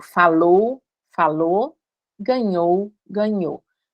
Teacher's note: os ditongos ou, que a gente reduz para o